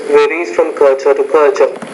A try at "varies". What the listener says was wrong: The V varies. You need to pronounce that V with more vibration.